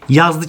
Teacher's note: Yazdır şəxs xəbərlikli ismini yazlı kimi tələffüz eləyirik. Çünki dır şəxs xəbərlik şəkilçisi tələffüz zamanı öz r-sını itirir